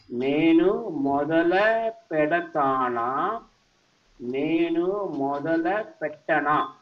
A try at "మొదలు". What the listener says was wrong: It can be మొదలు అండి, నాట్ మొదల.